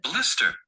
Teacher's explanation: you'll find that ER is actually unstressed schwa sound